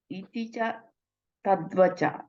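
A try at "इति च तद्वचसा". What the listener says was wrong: Vachasa. No, vachasa. I think you're missing the sa. Vachasa. Iti cha tad vachasa vrajanayako.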